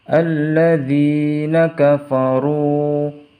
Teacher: Alladzina kafaru, runya juga harus dibaca panjang karena ada harokat dhammah bertemu dengan waw sukun, dibaca 2 harokat